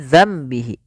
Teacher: yaitu suara nunnya kita ganti dan dibalikkan menjadi suara mim awalnya dananbihi menjadi dambihi karena di sini ditandai dengan Mim kecil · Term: iqlab